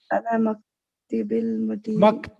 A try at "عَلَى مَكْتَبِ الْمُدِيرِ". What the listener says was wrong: Maktibil nahi. Maktabil Mudiri. Maktab. Ala Maktabil Mudiri. Ala, due to Ala, this became Majroor. So it became Maktabi.